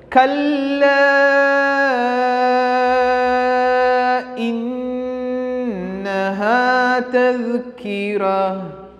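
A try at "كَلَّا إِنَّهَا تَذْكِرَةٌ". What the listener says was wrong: കല്ല ലാമിന് എന്തുണ്ട്? ശബ്ദമുണ്ട്, മദ്ദുണ്ട്. ലാമിന് കട്ടിയും കൊടുക്കണം, പിന്നെ എന്ത് വേണം? നീട്ടുകയും വേണം.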